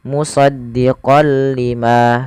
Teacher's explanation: Idgham artinya memasukkan, bila gunnah tanpa disertai dengan gunnah. Jadi kita hanya memasukkan saja tanwinnya kepada huruf lam dan tidak ditahan. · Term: idgham bila gunnah